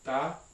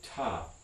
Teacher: You have a period of glottal frication after the release of the stop.